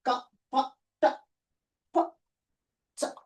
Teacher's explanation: There is no vibration in the vocal cords while pronouncing. They are called voiceless sounds.